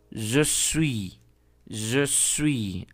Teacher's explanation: aquí la S no se pronuncia y la letra U tiene el mismo sonido aquí cerrado con esa U.